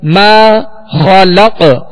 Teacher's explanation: ماشاءاللہ یہاں الف مدہ ہے، الف سے پہلے زبر ہے میم پر، تو اسے 2 حرکت یعنی 1 الف کی مقدار کھینچ کر ادا کریں گے. ما خلق خا کو پر پڑھیں گے حروف مستعلیہ میں سے، اور قاف پر ہم نے وقف کیا، یہاں ساکن ہے اور وقت کی صورت میں ہم نے اس کو ساکن کیا تو یہاں پہ قلقلہ ہوگا.